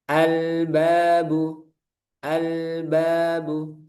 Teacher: Maka al-nya nanti dibaca jelas, lamnya dibaca jelas. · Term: alqamariyah